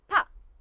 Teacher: it's a voiceless bilabial